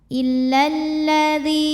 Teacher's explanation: Sebab ada ya sukun sebelumnya baris kasrah. Maka huruf dzal kita panjangkan 2 harokat. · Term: mad tabi'i dhahiri